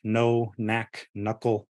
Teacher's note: you don't hear a k, like the K would normally sound, right? It just totally gets lost to the n.